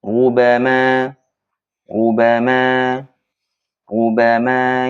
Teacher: Yang kedua, patokannya adalah ketika kita mengucapkan ro atau ru, patokan tafkhimnya, tebalnya adalah posisi posisi bibir kita. Menyempitnya bibir kita itulah yang menyebabkan menyebabkan ro tersebut tebal ya. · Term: ro dammah